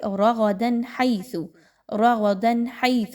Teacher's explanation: تنوین کے بعد ہا آ گئی تو اس کو بڑا کلیئر پڑھیں گے